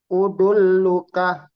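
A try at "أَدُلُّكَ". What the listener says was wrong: A bukan O. A.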